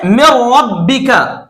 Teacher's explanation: अब आप देखिए कि बिल्कुल पहले मिसाल की तरह से मैंने मीम को रा के साथ मिला दिया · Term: इदगाम बिला गुन्ना